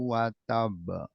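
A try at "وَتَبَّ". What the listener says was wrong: Ini ditahan dulu. kurang ditahan. Nah, sedikit ditahan ya. belum ditahan. Jadi di sini anggap ada dua huruf. Yang pertama huruf ba sukun, yang kedua berharokat ya.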